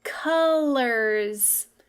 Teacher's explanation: It almost sounds like we have a short U at the beginning, but we see an O.